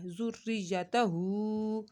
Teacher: हू को हमने यहाँ पर एक अलिफ के बराबर खींच कर पढ़ा है।